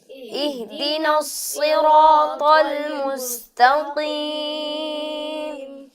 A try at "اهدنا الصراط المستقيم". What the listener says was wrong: المستقیم یہ ایک غلطی ہے کہ جب ہم تو کو ادا کرتے ہیں تو اس کی ادائیگی کے وقت سانس نکلتا ہے، سانس جاری رہتا ہے. جیسے تک تمون، اب یہ کاف کی ادائیگی میں سانس جاری ہوا تو حرف کمزور ہو گیا.